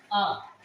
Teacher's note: तो कंठ से निकलती है आवाज, गले से। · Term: कंठ स्वर